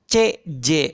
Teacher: Menempelkan daun lidah atau tengah lidah dengan palatal, langit-langit keras. Sama nih C dan J begitu. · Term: laminopalatal